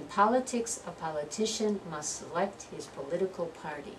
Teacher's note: politics first syllable, politician third syllable, political is the second syllable.